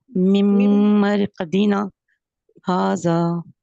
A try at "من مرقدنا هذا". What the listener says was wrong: اصل میں مقداریں جو ہے نا وہ پوری نہیں ہو رہی. مم ایک مقدار یہاں ہو رہی ہے. مم پھر آگے مرقدنا مرقدنا یہاں پہ علی مدہ. آگے پھر کھڑی حرکت ہا, پھر اس کے بعد ذا. یعنی میں توڑ توڑ کے اس لیے پڑھ رہا ہوں کہ ان کی جو مقداریں ہیں وہ پوری کیجیے. مم مرقدنا ہاذا.